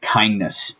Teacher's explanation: You can also delete the T or the D when it is in a cluster of consonants, even across word breaks or in the middle of words. So kindness, it's hard to say n-d-n, so it ends up sounding like kindness. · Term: deletion